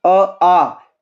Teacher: then कंठ ऐसे कौन कौन से हैं, जैसे आप अपने आप देखो अ है ना, अ या आ, तो ये क्या बनेंगे, कंठे बनेंगे ना, क्योंकि अ आ, जीभ और दंत, इनका कोई भी साथ में कोई कॉम्बिनेशन नहीं है, सीधा गले से आवाज आ रही है